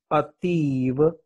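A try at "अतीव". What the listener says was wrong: You have, I think you have got a Hindi base. That's why you're cutting all the vowel at the end. Not Ativ. Ativa. You have to read like that. Ativa, not Ativ.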